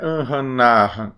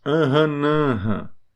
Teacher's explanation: Então o A vai com tio também, vai com som de nasal, mesmo não tendo tio.